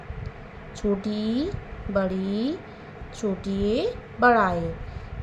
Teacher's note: अग्र स्वर जिनका उच्चारण जीभ के आगे वाले हिस्से से किया जाता है